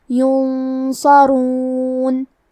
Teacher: صاد حروف الاخفاء میں سے ہے تو ہم نون ساکن کو چھپاتے ہوئے اور غنہ کے ساتھ یہ حکم کو ادا کریں گے. کیونکہ صاد حروف تفخیم میں سے ہے اور غنہ اپنے اگلے والے حرف کا حکم لیتا ہے تفخیم میں اور ترقیق میں، تو ہم یہ غنہ کو بھاری آواز میں ادا کریں گے